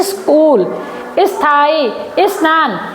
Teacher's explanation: इसका हम उच्चारण इ से शुरू कर रहे हैं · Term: इ की ध्वनि